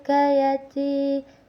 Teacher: karena ya mati didahului oleh huruf yang berbaris kasrah jadi dibacanya dua harakat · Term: mad thaobiiah